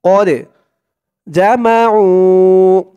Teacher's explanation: এই দালটা কলকলার হরফ ধাক্কা দিয়ে পড়তে হবে